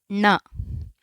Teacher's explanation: when you are pronouncing this ಣ tongue has to fold inside